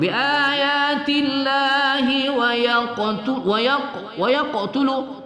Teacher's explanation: qalqalah pada qaf berbaris sukun, qalqalah sughra di tengah kalimat